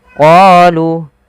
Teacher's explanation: panjangkan huruf qa 2 harakat karena pada lafal qa ada bacaan mad tabi'i, yaitu ditandai dengan huruf qa yang bertemu alif setelahnya.